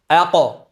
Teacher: qof harfida isti'ala sifati bo'lganligi sabablisidan bu o ga moyil qilib tebrantiramiz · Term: qalqala